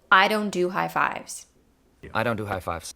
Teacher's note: unstressed and with i at the beginning of the phrase it's pronounced with a flapped t slash fast d instead of a true d at the beginning of the word the o diphthong remains in its position the t however will